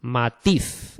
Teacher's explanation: Las palabras agudas son aquellas en las que recae el acento, es decir, el golpe de voz, la sílaba tónica, en la última sílaba